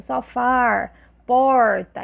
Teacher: esse R mais retroflexo